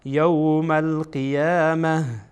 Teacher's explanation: اما وقتی که خواسته باشیم اینجا استاد بشین میگین یوم القیامة. این تا به ها تبدیل میشه